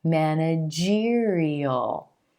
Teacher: you'll hear that e as in green sound emphasized right before the suffix